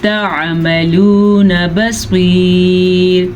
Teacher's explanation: اس را کو ہم باریک پڑھیں گے